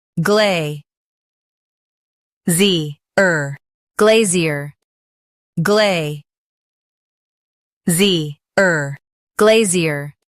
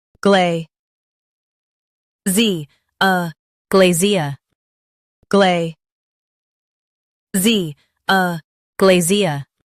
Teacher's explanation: In US, stress glay and say zier. In UK, use uh softly.